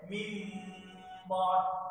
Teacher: তবে আমাদের পড়ার সুবিধার্থে কোরআন মাজিদের যে সমস্ত জায়গায় বা এসেছে সেইখানে অবশ্যই একটি ছোট মিম রয়েছে, যাতে আমরা মিমটাকে দেখে অন্তত বুঝতে পারি যে এখানে ইকলাব বা কল হবে, এটা উচ্চারণ এজহারের ন্যায় হবে না, বরং এটা ইকলাব বা পরিবর্তন করে মিম রূপে এটাকে উচ্চারণ করতে হবে